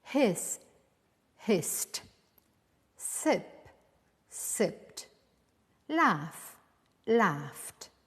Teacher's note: now when the last sound of the verb is voiceless like s p or F you will tend to pronounce the Ed ending as a t